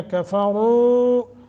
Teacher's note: रा के ऊपर ज़मा है, तफ़ख़ीम मोटा करेंगे और मद्द मुनफ़सल है, लंबा करेंगे।